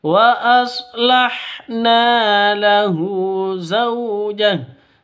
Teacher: 'Zau', kualitas lin, fleksibel, lembut, tidak boleh disentak, tidak boleh diregangkan.